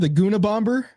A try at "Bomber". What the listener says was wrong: Why are you pronouncing the B in that? Guna Bomber? You mean Guna Bomber? Bomber. The B is silent. Yes.